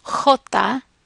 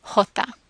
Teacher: One difference is that it's often a harsher sound. It's pronounced back in the back of the throat, and it's a harsher sound than the English H.